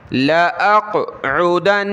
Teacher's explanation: قاف پر قلقلہ ہوگا اور قاف کو موٹا پڑھیں گے